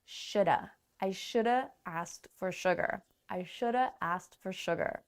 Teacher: Now, let's ask ourselves which words are stressed. Should is stressed and have is not. And that is why it becomes shoulda